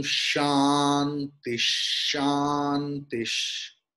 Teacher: But in two Shantis, there is Visarga in between, and after that Shakara is there. So Visarga's pronunciation will be changed into Shakara.